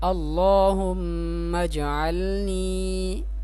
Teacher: یہ دیکھیں اللہ، اس اللہ کے نام کو پر کر کے پڑھیں گے یعنی موٹا کر کے پڑھیں گے، اور لام کو ایک الف کی مقدار کھینچ کر پڑھیں گے اللہم اجعلنی. اس میم کو جیم کے ساتھ ملائیں گے اور جیم کو ہلا کر پڑھیں گے کیونکہ یہ حروف قلقلہ میں سے جیم ہے